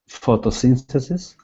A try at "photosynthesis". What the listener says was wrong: Nice.